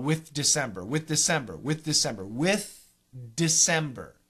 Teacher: there are times when the th is at the end of a word and the next word begins with a D in that situation you might not hear the th